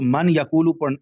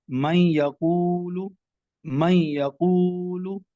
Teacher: تو نون ساکن یا تنوین کے بعد حروف یرملون میں سے جب کوئی لیٹر آ جائے گا تو وہاں پر ادغام ہوگا، یعنی غنہ کر کے بھی پڑھیں گے اور وہ لفظ دوسرے لفظ کے اندر ملتا ہوا، داخل ہوتا ہوا بھی محسوس ہوگا